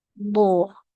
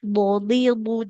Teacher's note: Jadi huruf d itu akan senantiasa tebal dalam kondisi apapun dalam berharakat fathah kasrah atau damah atau disukunkan